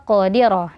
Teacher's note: qof sukun dibaca tebal ya qodiro dan di situ ada Qalqalah ya ya qodiro rnya juga tebal karena ro berharakat fathah kemudian